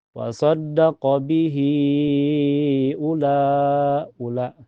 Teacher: Jadi dibaca panjang, selama 4 sampai 5 ketukan. Oleh karena itu, aturan ini adalah Mad Silah Tawilah. · Dan setelahnya lagi ada hamzah ya. Jadi cara bacanya panjang bisa 4 sampai 5 harokat. Jadi ini hukumnya mad silah tawilah ya.